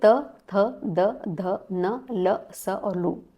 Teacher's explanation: त वर्ग का उच्चारण स्थान क्या है तो आपको लिखना है वहां पे दंत्यः